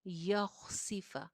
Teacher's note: खौ मोटी है, सीन बारीक, सीन के नीचे जेर